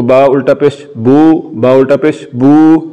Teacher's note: پیش کو لمبا کرنے سے واو ساکن کی آواز نکلتی ہے، یا یہ کہہ رہے ہیں کہ واو مدہ کی پہچان یہ ہے کہ واو ساکن سے پہلے پیش ہوتی ہے.